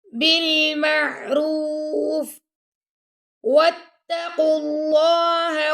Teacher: اللہ کے لام کو موٹا پڑا